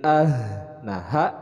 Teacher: ini adalah berasal dari pangkal tenggorokan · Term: huruf H